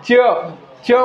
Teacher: च च म्हटल्यानंतर शेंडा वळतो आणि हिरड्यांच्या वर जाऊन टच करतो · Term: तालव्य वर्ण